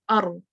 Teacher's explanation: اور اس کے کیونکہ یہ بہت ٹائنی ہے، نیرو ہے، تو آواز زور سے آ رہی ہے، تو وہ پھر اس سے کیا ہوگا کہ زبان ایک دفعہ سے کپ کپی آتی ہے، مینس کہ وہ وائبریٹ کرتی ہے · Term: تقریر